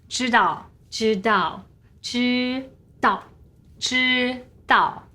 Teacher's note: First tone and then the fourth tone.